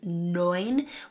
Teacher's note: We have the EU saying oi in neun